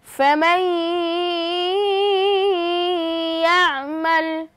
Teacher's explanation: নুন সাকিনের বামে ইয়া এসেছে অর্থাৎ ইদগামে বা গুন্নার হরফ আমরা গুন্নার সহিত মিলিয়ে পড়ব।